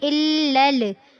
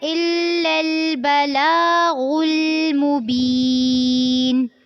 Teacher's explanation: دوبارہ سے دیکھیے، وَمَا عَلَيْنَا إِلَّا اب الف کو لام سے ملانا ہے اور اسی لام کو اگلے لفظ کے لام کے ساتھ ملانا ہے، إِلَّا الْبَلَاغُ لیکن دھیان رکھنا ہے کہ لام کو لام سے ملاتے ہوئے جھٹکا نہیں ہونا چاہیے، جیسے کہ الل، اس طرح نہیں ہونا، اس کو نرمی سے پڑھنا ہے، إِلَّا الْبَلَاغُ الْمُبِينُ۔